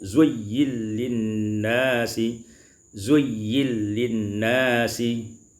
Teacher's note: Pada ayat yang ke-14, zuyyina linnasi, idghamun nun fil lam, diidghamkan nun pada lam menjadi zuyyil linnasi, zuyyil linnasi.